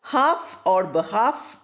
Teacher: Half or behalf both are pronounced without the L